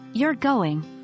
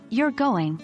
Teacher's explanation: you're going with a rising intonation can indicate surprise or disbelief, while you're going with a falling intonation can suggest expectation or confirmation